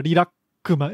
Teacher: It's got the glottal stop between the consonants